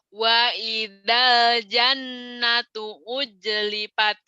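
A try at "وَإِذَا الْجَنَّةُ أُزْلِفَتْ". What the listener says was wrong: Orang Sunda dasar ujlipat aja. Padahal dia Dia di Australia ada New Zealand, tahu Zai. Zero, zero, ada zero, kenapa ada jero, jero? Orang Sunda dasar ya. Lidahnya, aduh. Iya, wa idal jannatu uzlifat. Uznya kurang ini ya, belum gurih itu zainya uzlifat.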